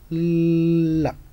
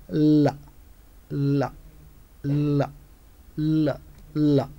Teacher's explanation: articulated with complete closure in the center of the vocal tract the sides of the tongue are lowered so that air can release by the sides without friction oral cavity is blocked oral cavity is blocked at the center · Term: lateral sound